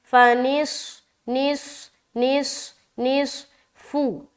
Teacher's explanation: اب یہاں پر کوئی نص ایسا نہیں بولنا، باریک کر دیں گے تو سین بن جائے گا، موٹا رکھیں گے کیونکہ یہاں پر صاد ہے